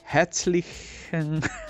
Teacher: y la Z suena como TS